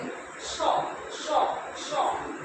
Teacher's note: উচ্চারণে তখন কি দন্তস্ব, দন্ত মানে দাঁত, দন্তস্বয়ের উচ্চারণ অ্যাকচুয়ালি দাঁতের থেকে যে স্বটা আমরা বলি সেটাকে বলা হয় দন্তস্ব, দন্তস্ব, ঠিক আছে? দন্তস্ব মানে আমাদের জিভটা কোথায় আসছে? দাঁতের কাছে আসছে